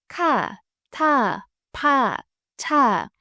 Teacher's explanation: When you say 카, 타, 파, 차, you blow out air from your mouth.